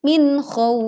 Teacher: Wa amanahum min, tekan huruf nun sukun tanpa dengan memantulkan suaranya, min khauf. Kita baca waqaf dengan memanjangkan khaw 2, 4 sampai 6 harokat, lalu ditutup dengan fa sukun